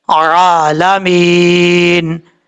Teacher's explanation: جب سٹاپ کریں گے تو نون ساکن ہو جائے گا